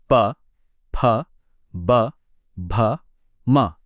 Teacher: इन सबको बोलते समय आपके होठ आपस में जुड़ते हैं। वो हवा को पूरी तरह से रोकते हैं और फिर अचानक से छोड़ देते हैं।